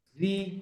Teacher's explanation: তো র পড়ার সময় 1 নম্বরে যেটা মনে রাখবেন, রতে যখন জের হয় তখন র পাতলা হবে